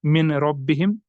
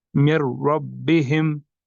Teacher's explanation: ऐसे नहीं पढ़ेंगे हम मिन रब्बिहिम, ये गलत तरीका है। यहाँ पर हमें नून को अपने नेक्स्ट हर्फ के साथ मिलाना है, यानी रॉ के साथ, और फिर उसको मुशद्दद पढ़ा जाता है, मिर रब्बिहिम। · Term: इदगाम बिला गुन्ना